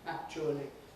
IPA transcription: ˈækʧuəli